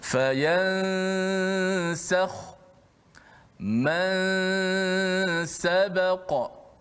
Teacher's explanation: Contoh, fayansakhu, masa sebut ya saja, habis ya saja, lidah kita dah pergi kepada makhraj huruf selepas nun tu, huruf sin lah. Okey, dan nun tu dikekalkan pada gunnah khayshum saja